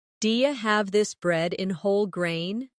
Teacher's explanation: In connected speech, do you becomes dia?